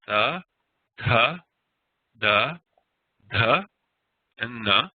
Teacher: the dentals they are pronounced using the um tongue against the tip of the top row of front teeth